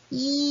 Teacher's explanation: 이 하면 혀가 앞쪽으로 튀어나올 것처럼 가까이 붙죠. 요거는 대표적인 전설모음이에요.